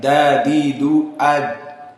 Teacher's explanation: Adapun dal, maka dia sifatnya qalqalah. Dan makhraj dal telah kita berikan juga dari atraf al-lisan yang bertemu dengan lisah as-sanaya al-ulya.